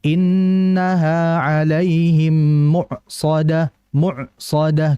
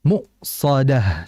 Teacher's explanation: Jadi kalau baca hamzah sukun tuh ya kayak kayak rem mendadak